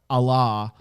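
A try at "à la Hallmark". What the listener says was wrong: you said Allah. Like we've switched religions.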